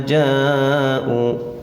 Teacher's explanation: Karena ada mad tabi'i bertemu hamzah dalam satu kalimat, panjangnya yaitu 5 sampai 6 harakat. U-nya mad tabi'i, waw sukun sudah subuh di sini. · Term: mad wajib muttasil